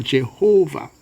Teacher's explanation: when it is written as Jehovah we tend to put the stress on the on the second syllable